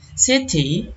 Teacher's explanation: Intervocalic T, suara T seperti D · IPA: /t/